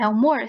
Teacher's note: A é uma sílaba e mor é outra sílaba. A última sílaba é a sílaba mais forte. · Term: oxítona